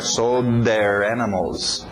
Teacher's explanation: O D entrando no TH de there.